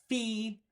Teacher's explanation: my lip was touching the bottom of my teeth Fe the F sound in English f is known as a · That was fee. And you can tell because my lip was touching the bottom of my teeth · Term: labiodental